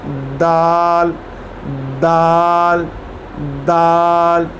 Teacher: जो हमारी ज़बान की टिप है और जो सामने वाले दांत हैं उनके जो पीछे है साइड, उस पर ये टिप लगेगी, नोक पे नहीं, जो पीछे वाली साइड है वहाँ।